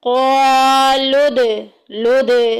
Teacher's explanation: क़ा में देखें अलिफ पीछे ज़बर आ गई, अलिफ मद्दा का कायदा जारी हो रहा है। लाम को दाल के साथ मिला देंगे। क़ालुद लुद, दाल को ढीला छोड़ देंगे क्योंकि यह हरूफ़े कलकला में से है, आवाज़ गूंज के बाहर निकलेगी।